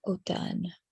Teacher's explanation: There's an M there, but it's not pronounced.